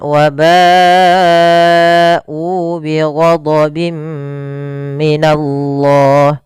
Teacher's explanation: kita hukumi dengan bacaan mad wajib muttasil yang harus kita panjangkan sepanjang 4 harokat. Dan tidak boleh dikurangi 4 atau 5 harokat.